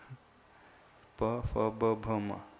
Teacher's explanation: जब पवर्ग का उच्चारण होगा तभी दोनों होंठ एक दूसरे से टच करेंगे।